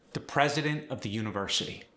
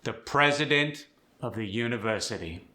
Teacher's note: Loud at the start, soft at the end. Kind of like an echo in the canyon.